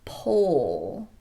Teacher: we need a long o sound the tongue will remain low and the lips will be very rounded